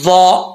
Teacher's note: ضا حروف مستعلیہ میں سے پر پڑھا جائے گا